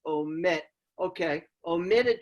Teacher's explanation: it's a two syllable word where the accents on the last syllable and you'd know it by where your jaw drops Oh men